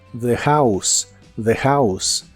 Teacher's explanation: la H de House se pronuncia como una J suave y la o se pronuncia como a